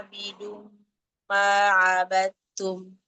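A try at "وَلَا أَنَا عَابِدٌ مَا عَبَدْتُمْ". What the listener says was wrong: Mat jaiznya kurang nih, harus sama yang di atas.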